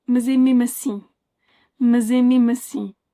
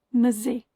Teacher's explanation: That S in between two vowels, even if those are in two different words, will change the S into a Z.